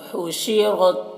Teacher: ہا کو حلق سے ادا کریں گے اور را کو پر پڑھیں گے